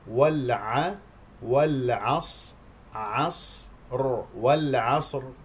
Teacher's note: نقف عليها بسكون وبتف خيم لانها ساكنه قبلها ساكن قبلها مفتوح الصاد ساكنه في المرتبه الرابعه من مراتب التفخيم